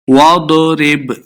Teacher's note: बा हुर्फ़े क़लक़ला से साकिन है, इसलिए इसको हिला के पढ़ना है, वाज़े करना है।